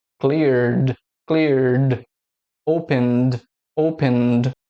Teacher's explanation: Veja que a última letra tem a vibração das cordas vocais. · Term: o som do D